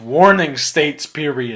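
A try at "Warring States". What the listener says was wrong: The warring state, not warning. Warring.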